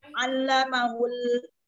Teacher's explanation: Khalaqal insan, Allamahul, ada alif lam qamar ya, dibaca jelas, baca izhar atau jelas. Allamahul, jelas lamnya di situ, di lam ada sifat tawasut